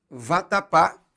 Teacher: vatapá tem a última sílaba tônica é portanto uma palavra oxítona terminada em a · Então, por exemplo, se você pega a palavra vatapá, que é aquele prato típico da culinária baiana, vatapá tem a última sílaba tônica